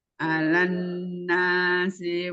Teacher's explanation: Ada nun tasydid, sempurnakan gunnahnya.